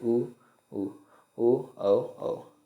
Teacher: आकृति के आधार पर स्वरों के दो भेद है वृत्ताकार स्वर इनके उच्चारण में ओठों का आकार गोल हो जाता है